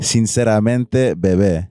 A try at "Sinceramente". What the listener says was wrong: You gotta roll the R.